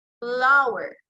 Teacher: So lower lip comes in contact with the upper front teeth. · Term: labiodental